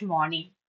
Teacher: R is completely silent. It's just morning.